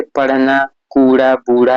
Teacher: इसके उच्चारण में जीभ पहले ऊपर उठकर मूर्धा को स्पर्श करती है और तुरंत नीचे आ जाती है।